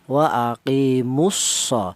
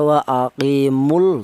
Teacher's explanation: Lam matinya dianggap tidak ada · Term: idgham samsiyah